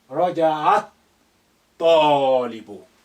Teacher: Ta is sun letter. And that's why the lam has become quiet. Alif is quiet, is silent, because it's not at the beginning.